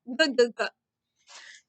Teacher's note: Remember, when I make this sound, my mouth stays open but moves a little. My tongue goes to the top middle of my mouth and my throat moves.